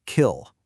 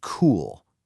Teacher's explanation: When you say kill, feel where your tongue is for that K sound. It's pretty far forward in your mouth. But for cool, your tongue moves way back. They are two totally different physical movements, creating two different acoustic signals, but your brain just says, yep, that's okay.